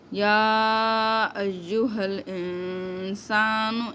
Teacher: انسان میں پہلا نون جو جزم کے ساتھ آ رہا اس کو غنہ کرنا